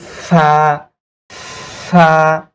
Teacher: দাঁতটা এই নিচের ঠোঁটের পেটের উপরে কামড় দিয়ে ধরবো